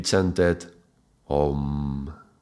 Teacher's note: this would be pronounced as a O, like a long vowel O. It's called a monophthong.